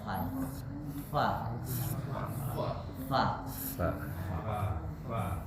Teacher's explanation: mudah dihafalkanu saksun sakat Bagaimana cara membaca Fa perhatikan saya bacakan huruf fa fa harus keluar dulu desisnya